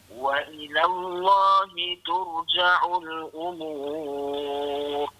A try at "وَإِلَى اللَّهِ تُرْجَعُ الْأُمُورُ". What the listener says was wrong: Turja'u tu kemana sikit ra tu? Tur. Wa ila Allahi tur. Cuma dia tersasul je dari sini. Itu bukan silap lah tu, tersasul.